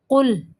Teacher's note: قاف کو موٹا پڑھیں گے، لام کو باریک پڑھنا ہے اور اس کو قلقلہ نہیں کرنا